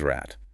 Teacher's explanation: The rule is final obstuent devoicing. If a voice sound is at the end, turn off the voice, the output is rat.